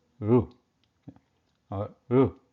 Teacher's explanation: So the tip of the tongue is rolled back towards the murdha, and then what happens? There is a small gap between the tip of the tongue and the murdha area, and then the air is pushed out to produce the sound Ru